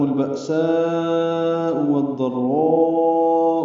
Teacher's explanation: اظہار قمری ہوگا، با میں حمزہ ساکن جھٹکے سے ادا ہوگا، سا میں مد متصل ہے، والضراء میں را میں بھی مد متصل ہے، ان دونوں کو مدوں کو 4 حرکات سے زیادہ لمبا کرتے ہیں